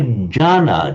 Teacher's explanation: Oh, so some would say Ghana just not pronouncing the N element at all